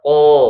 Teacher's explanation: Jadi tebal suaranya atau di mulut kita itu seperti bergema suaranya ya. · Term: tafkhim